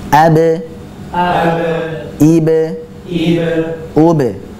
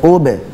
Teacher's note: jadi pada ube balik lagi bibirnya setelah manyun u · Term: sukun